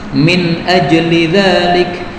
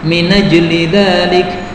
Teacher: Min ajli. Nah, ini hamzahnya dihapus, kemudian harakatnya pindah pada nun menjadi minajli dzalik. Boleh juga dibaca minijli dzalik, ya. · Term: naql